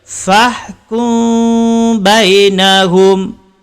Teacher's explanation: Kerana tidak ditahan, tidak dengung. Yang betul ialah dengung dan bibir tidak rapat. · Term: ifak syafawi